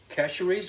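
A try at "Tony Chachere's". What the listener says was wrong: Cashery, no S. Cashery. You don't pronounce the S in French.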